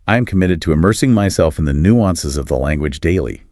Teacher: Listen for the fluid connection of committed to immersing myself and that subtle stress on nuances.